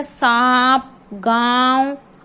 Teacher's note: Okay students, अंग को जो आपका आ के ऊपर चांद बिंदी लग जाता है उसको अनुनासिक कहते हैं। यह ऐसी ध्वनि है जिसके उच्चारण में हवा नाक व मुंह दोनों स्थानों से होते हुए निकलती है।